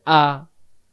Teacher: হামজাহ জবর আ হলকের প্রথম থেকে শক্ত করে আ